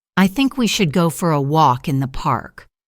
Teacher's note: Notice the connected speech here. Walk in becomes walkin.